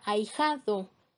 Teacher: La A y la I, la A es una vocal fuerte y la I es una vocal débil, entonces están formando un diptongo